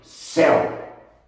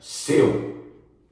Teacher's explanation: Repetindo, EL, acento agudo, aberto. Seu, sem acento, que é o som fechado.